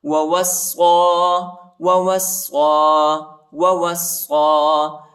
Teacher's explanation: صاد پر کڑا زبر بھی آیا ہے، اس کو ایک الف کی مقدار تک کھینچیں گے